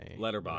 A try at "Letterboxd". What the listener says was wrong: Letterboxd. Well, it's like Letterboxd and then there's a D at the end. anytime someone pronounces it, I just hear them say Letterboxd, not Letterboxd. there technically should be that D pronunciation at the end.